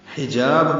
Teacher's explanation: حجاب میں ہا وسط حلق سے نکالیں گے، جا الف مدہ ہے